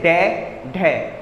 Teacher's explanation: उत्क्षिप्त व्यंजन जीभ पहले ऊपर उठकर मूर्धा को स्पर्श करे, फिर झटके से नीचे आए